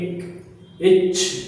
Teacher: இது வந்து மார்பு ஒலிப்பாங்க. இந்த எழுத்து பிறக்கிற இடம் வந்து மார்பு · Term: வல்லினம்